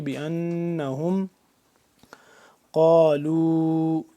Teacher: بأنہم نون یہاں پہ مشدد ہے، اس پہ ہم غنہ کریں گے